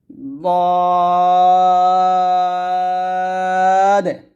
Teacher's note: জিহ্বার গোড়ার কিনারা উপরের মারি দাঁতের গোড়ার লাগিয়ে দ মুটা করে উচ্চারণ করতে হবে